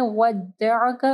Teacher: ہے۔ ما ودعک، ما کو نرمی کے ساتھ پڑھنا ہے، ودعک، عین کو گلے کے درمیانی حصے سے پڑھنا ہے ، اور کاف کو نرم پڑھنا ہے، کاف نہیں پڑھنا، کھ،